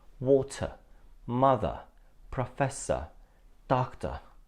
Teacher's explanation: that end ER and or are like water mother Professor doctor sound like ah at the end so we drop the re sound